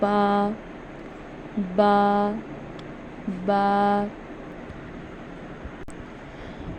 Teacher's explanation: बा बा एक ऐसा लफ्ज़ है कुरान में जो कि जब हम इसको अदा करते हैं तो जो हमारे होंठों का तर हिस्सा है हम इसको वहाँ से अदा करते हैं।